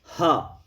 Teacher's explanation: जब हा का उच्चारण हम करते हैं तो वायु केवल कंठ में टकराती है और बाहर निकल जाती है। बोलिए हा, तो वायु जो है तो तेजी से मुख से निकल जाती है, केवल कंठ में टकराती है और पूरा मुख खुला रह जाता है, इसलिए इसको कंठ वर्ण कहा जाता है।